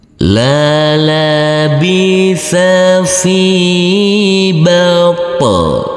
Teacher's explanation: Huruf to harus kita pantulkan karena huruf to yang bersukun ini adalah bacaan qalqalah